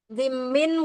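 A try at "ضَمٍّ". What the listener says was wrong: Bolehnya dibaca dhammin atau dhummin. Kalau dhimmin enggak ada. Dhammah itu kan boleh dibaca dhammah, boleh dibaca dhummah. Kalau dhimmah enggak ada dhimmah.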